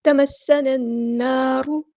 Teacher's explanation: نون پہ غنہ زمانی ہو رہا ہے کیونکہ نون مشدد ہے